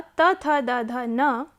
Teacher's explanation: ऋतुलसानां दन्ता इत्यनेन सूत्रेण रि ऋकार, तु तवर्ग, त थ द ध न, ल स वर्णानाम् उच्चारणस्थानं दन्तः